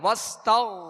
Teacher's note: آگے غائن ہے وستغ, تو غائن کو پر پڑھیں گے, حروف مستعلیہ میں سے ہے